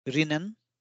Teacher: जिस तरह से थाई भाषा में र नहीं है, वैसे ही जापानी भाषा में ल नहीं है, और ना ही आधुनिक काताकाना में ल के लिए कोई प्रावधान अभी तक रखा गया है। इसलिए विदेशी शब्दों में ल की ध्वनि आने पर जापानी में उसे र की ध्वनि से प्रतिस्थापित या रिप्लेस कर दिया जाता है